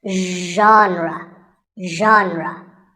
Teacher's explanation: pay attention to the first sound it's like shh but you have to put your voice into it